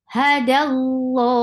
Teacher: Ha is short, dal is light, attached with lafz jalala, and then this lam will be heavy